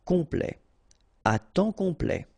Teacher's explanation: OM is nasal here, just because you get your P after that